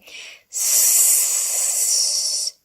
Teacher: nothing no vibrations it's an unvoiced sound the vocal cords are not vibrating